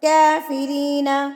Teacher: کاف کے اوپر کڑی زبر ہے, اس کو بھی آپ نے لمبا کر کے پڑھنا ہے